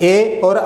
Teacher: अब ए और आई का उच्चारण स्थान क्या होता है? कंठ तालु।